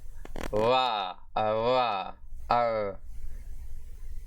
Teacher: the voiced labiodental approximant consonant